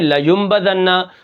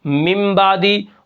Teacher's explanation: چھوٹی سی میم لے آئیں گے اور اس نون کی آواز کو میم کے ساتھ بدل دیں گے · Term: اقلاب